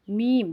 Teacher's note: میم دونوں ہونٹوں کو آپس میں ملا کے پڑھنا ہوگا. میم، جب آپ میم پڑھیں تو دونوں ہونٹ آپس میں آ کے مل جائیں.